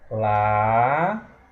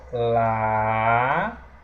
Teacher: O O se separou do A. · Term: hiato